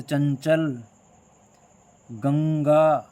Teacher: आप जैसे इस ध्वनि का उच्चारण करोगे तो आपको महसूस होगा कि नाक में एक कंपन सा पैदा हो रहा है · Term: अनुस्वार